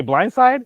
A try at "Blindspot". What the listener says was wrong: Yeah, you said Blindside. But Blindspot, if you watch the pilot of Blindspot and the second episode of Blindspot, they literally have the same fights.